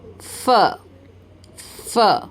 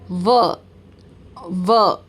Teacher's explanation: You will feel no vibration. Then v, v. Now here there is a vibration.